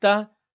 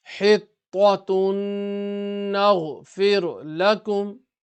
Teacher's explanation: So it's going to be to, not ta, to, full mouth.